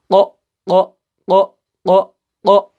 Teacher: زبان کا پچھلا حصہ اٹھ کر اوپر والے نرم تالو کو چھوتا ہے تب جا کے جو ہے یہ 2 حروف ادا ہوتے ہیں۔ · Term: قوف